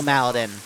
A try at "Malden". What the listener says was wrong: Why are you saying Maladin? You're saying Maladin. Malden. Adding an extra.